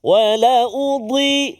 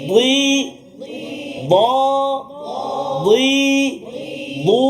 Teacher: Kalau huruf dad tepi lidah kena gigi geraham sebelah kiri atau sebelah kanan